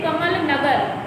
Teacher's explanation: इन शब्दों के दूसरे अक्षर क्रमशः मा और गा पर अधिक बल दिया गया है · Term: बलाघात